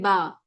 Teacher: ठीक है, बा कहाँ से अदा होगा? आपका दोनों लिप्स की जो वेट पार्ट होता है, अंदर की तरफ जो गीला हिस्सा होता है, वेट पार्ट, यानी कि उसको कहा जाता है लिप्स की तरी। वहां से जो है बा का मखरज अदा होता है।